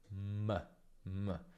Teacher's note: il velo si abbassa e l'aria passa dal naso. · Se ti tocchi il naso, senti proprio che il naso vibra, mentre se dici o b, no, perché l'aria in quel caso esce dalla bocca. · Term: nasale bilabiale